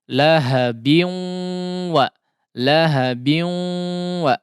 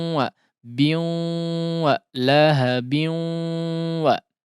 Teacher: Nah, di sini perlu diperhatikan ya karena idgham bi gunnah sehingga gunnahnya harus dipanjangkan ya. Harus ada ditahan terlebih dahulu. Dipanjangkan biu wa lahabin wa.